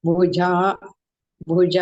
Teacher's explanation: भा महाप्राण भगिनी जा अल्पप्राण